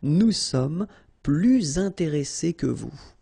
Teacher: you make this little link, little liaison between the two, so you hear a little bit this S.